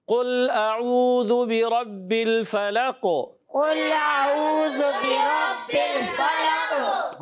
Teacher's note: ہے جو سکون والا قلقلہ ہوتا ہے، یہاں ساکن قلقلہ ہوگا، قلقلہ میں آواز لوٹ کر آتی ہے